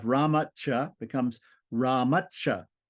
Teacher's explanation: the t turns into a c so you double the C basically